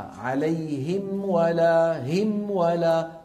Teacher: صوت الميم منفصل تماما الانفصال عن صوت الواو التي بعدها، وكذلك صوت الواو مفصول عن صوت الميم، كل ما في الأمر أنهما تجاورا. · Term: الإظهار